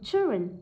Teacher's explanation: Children, danh từ rơi vào âm thứ nhất, hai âm tiết mà